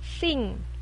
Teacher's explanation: Dan nge dalam sing, yaitu dari bunyi yang di belakangnya. Ngeh, ini nasal, gabungan N dan G, biasanya dibacanya ngeh